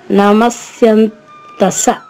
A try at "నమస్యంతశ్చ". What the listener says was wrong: సా కాదు చివర. నమస్యంత. పోనీ నమస్యంత అని చెప్పండి. అంతే, పక్కన చా పెట్టుకోండి. నమస్యంత చ పెట్టే చెప్పండి. ఇప్పుడు లోపల కొంచెం ఒక సేవత్తిస్తే సరిపోతుంది. నమస్యంతశ్చ.